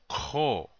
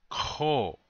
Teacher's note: The dot over the K means it's guttural. It's like trying to say the K sound like a K, yeah, like in kite, but then you make a rough sound like you're spitting. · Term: guttural K sound